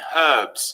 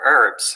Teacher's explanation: gb chefs like the h in herbs whereas they prefer herbs across the pond